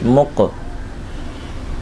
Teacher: مق میں کلکلہ کریں گے، میم قاف پیش مق، حروف کلکلہ ساکن ہے، کلکلہ خود ظاہر ہوگا